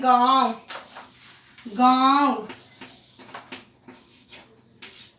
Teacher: अनुनासिक के उच्चरण में हवा नाक और मुंह है दोनों से निकलती है